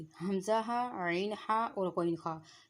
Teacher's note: یہ حروف جو ہیں یہ حلق سے ادا ہوتے ہیں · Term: حروف حلقی